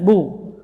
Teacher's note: Ba huruf syiddah dan jahar, bu keluar dari dua bibir, ya. Maksudnya dua bibir bagian luarnya.